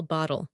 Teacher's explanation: bottle has a flap T and a dark L